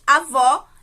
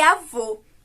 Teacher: na palavra avó, a gente tem um acento agudo, né, que abre o som do O. E na palavra avô, a gente tem o acento circunflexo, que fecha o som do O.